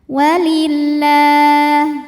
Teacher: Lam jalalah dibunyikan secara tarqiq sebab huruf sebelumnya berbaris kasroh, maka dibacanya tipis